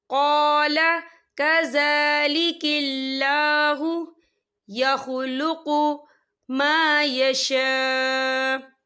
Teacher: ولد ولم یمسسنی بشر قال کذالک اللہ، یہ دیکھیں کذا، زال کے پر کھڑی حرکات ہے تو ہم اسے 2 یا 3 حرکت کے برابر کھینچے پڑھیں گے، اور کذالک اللہ، اللہ کا نام باریک پڑھا جائے گا کیونکہ اللہ کے نام سے پہلے زیر ہے